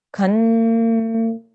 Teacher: What we need to do is to make sure when we join the kaf to the noon gunna, we have a sustained nasal sound